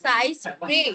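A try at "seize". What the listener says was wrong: সিস কথাটা সাইজ নয়, সিস প্রে মানে শিকার।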